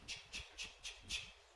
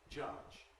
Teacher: If we take the word touch, that ends in ch, touch, and compare with it the word judge, judge, which ends in the lenis, you could perhaps easily detect the forcefulness of the ch in touch, ch, ch, ch, ch, ch, compared with the lack of force of the j in judge.